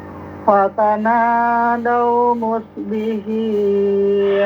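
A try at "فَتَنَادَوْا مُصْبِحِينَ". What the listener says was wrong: Haknya bersihkan dikit. Haknya hin. Ha-hi. Fatanadaw musbihin.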